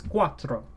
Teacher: oh it is rolled the R is rolled